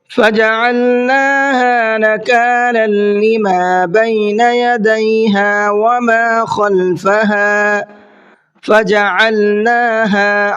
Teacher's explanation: عین کو حلق سے نکالنا ہے اور نون کو بھی کھینچ کے پڑھنا ہے اور ہا کو بھی